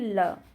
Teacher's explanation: जीभ तालू को छुए किंतु पार्श्व यानी कि बगल में से हवा निकल जाए उसको पार्षिक व्यंजन कहते हैं जैसे कि ल जैसे ल बोलते हैं तो आप देखिए ऊपर